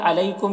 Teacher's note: अलैकुम यहाँ पर या लीन है, इसे नर्म आवाज़ के साथ जल्द पढ़ना है